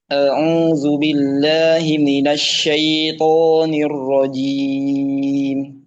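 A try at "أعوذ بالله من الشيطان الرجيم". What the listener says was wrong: Baca syai'nya jangan dibikin ini. Jangan syai'. A'udzu billahi minasy syai'. Jadi lin itu lembut. Jadi nggak dibikin nggak dibikin sidah ya, nggak dibikin kuat. Dibikin lembut aja, lin.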